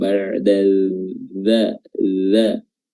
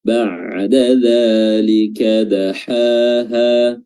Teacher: Di sini ada huruf ain yang berada di wasatul halq, ba'da dzalik. Huruf dzal, ujung lidah diapit oleh gigi atas, ujung gigi atas atau ujung gigi atas dan bawah, bukan ba'da dza.